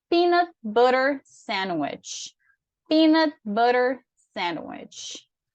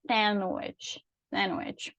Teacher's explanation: A gente tem o D ali, mas na hora de falar, a gente não reproduz esse D, é o que a gente chama de silent letter.